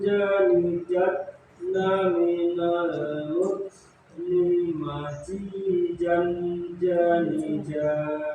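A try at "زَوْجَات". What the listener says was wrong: Ini jadinya jim semua malah. Itu berarti ini Pak, kesalahannya itu karena lidahnya nempelnya di atas, di kursi atas. Jadinya punya jim. Nah, itu karena nempel lidahnya ini bukan di bawah, bukan di kursi bawah, tapi di kursi atas. Tempelin lidahnya itu di bawah. Az, za.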